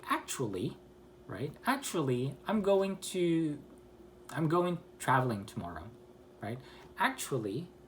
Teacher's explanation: Actually, it goes up and then goes down. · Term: rising and falling